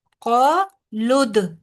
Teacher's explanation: قالد دال پہ کلکلا ہوگا، قالد او لمبا نہیں ہوگا، ٹھیک ہے؟ آئین پہ صرف پیش ہے، آگے کوئی واو مدہ نہیں، اس لیے بہت دھیان رکھنا ہے کہ روانی میں پڑھتے ہوئے او نہ ہو جائے آپ کا.